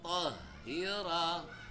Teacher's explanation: Hati-hati, haknya jadi tebal. Tohnya tebal, haknya tebal. Tahira. Tahira, ranya panjang. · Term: huruf tebal